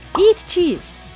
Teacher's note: In this sentence, because it is a command, each of the words are stressed. Eat and cheese.